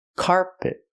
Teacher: The second syllable is not stressed, it's closed and relaxed. Pit. Not carpet, but carpet.